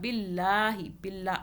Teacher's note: اللہ کو باریک پڑھا، اللہ سے پہلے زیر آ رہا ہے